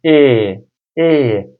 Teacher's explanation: Türkçedeki e ile i arasındaki bir sese tekabül ediyor.